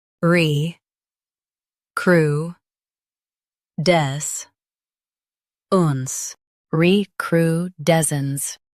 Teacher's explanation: Emphasize d e s and soften cence.